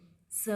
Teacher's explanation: Tongue and एलोवेलर ridge या teeth ridge, तो इसे एलोवेलर साउंड बोला गया।